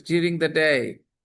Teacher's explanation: when da sound is followed by ya sound, da changes into ja